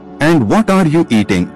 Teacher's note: Intonation goes down, WH question.